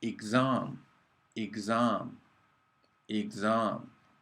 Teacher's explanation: after the first vowel we got a g and then a z, exam. A g sound and a z sound.